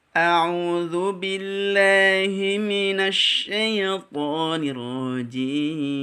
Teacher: Di huruf shin itu ada sifat at-tafashi, yaitu udara dihembuskan di dalam mulut